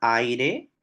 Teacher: En la palabra aire tenemos una vocal abierta. Y a esa vocal abierta le sucede una vocal cerrada átona. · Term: diptongo